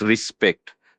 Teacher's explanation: The emphasis is on the second syllable, spect, respect.